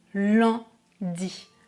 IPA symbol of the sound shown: œ̃